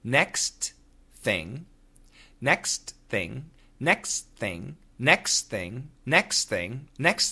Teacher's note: So as I say it faster, the TH sound disappears.